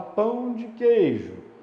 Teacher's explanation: pão mais forte queijo mais forte e o de fica mais fraquinho ali no meio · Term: monossílabo átono